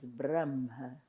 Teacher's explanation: a strong tradition already is to switch the sounds of the ha and the ma first and then the ha. · the ha is considered a voiced, soft sound in the Sanskrit language. And to keep it soft, that's my perception or theory.